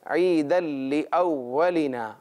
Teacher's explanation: عیداً یہاں غنہ بھی نہیں ہے اور تنوین کی آواز بھی نہیں ہے، اس لیے کہ دال کا آگے لام میں ادغام ہو رہا ہے